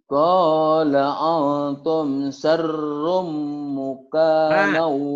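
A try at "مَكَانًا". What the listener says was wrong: Ma, bukan mu, ma. Maka nau. Ma, mukana dari mana? Muka siapa emang? Makana.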